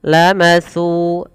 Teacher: hati-hati di dalam melafalkan huruf sa, tidak boleh kita mengganti jadi huruf sin. Terdengar bunyinya lamasu dengan s, padahal di sini bukan s yaitu sa.